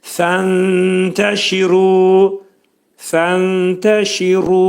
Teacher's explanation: Fənşir şi incə samit. Tə incə samit. Ru qalın oxunacaq. · Ru burda iki səs qədər qaldırılır.